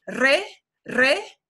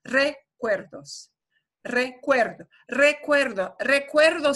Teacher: That's got a strong R at the beginning, re, re, and a softer, not as strongly trilled R, a minor trill in the second R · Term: The Spanish R